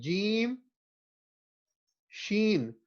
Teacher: center of the tongue touches the top of the mouth and then touch کرتے ہوئے آواز produce ہو رہی ہے جیم کی